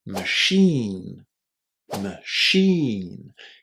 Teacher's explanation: Can you hear how much emphasis there is on the second syllable here? There is a long e in there too. · The ch is pronounced as a shh. And the first syllable is not stressed. It's very very short.